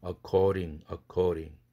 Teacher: accord에다가 ing 붙으니까 모음이 붙어서 드가 졸지에 플랩이 돼야 되죠.